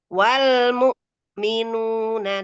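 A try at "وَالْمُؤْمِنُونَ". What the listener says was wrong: Ditahan dulu, Bun, satu harokat. Kurang tekan, ditekan lagi.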